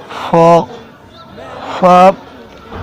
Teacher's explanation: ऊपर के दांतों के किनारे और निचले होंठ के तर हिस्सा से अदा होता है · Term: हरूफ शफविया